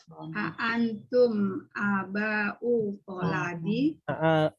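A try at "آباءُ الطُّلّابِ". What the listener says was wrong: Aba'ut tullabi. Tuh, ya. Bukan to tapi tu, ya. Tullabi.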